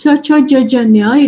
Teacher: it is the middle part of the tongue that is touching the palate region